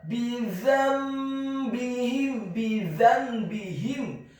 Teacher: Kemudian kata bidzambihim, huruf ba-nya dibaca tipis, tarqiq kasrah 1 harokat. Kemudian huruf za-nya dibaca tipis, tarqiq lidahnya agak keluar sedikit, fathah 1 harokat.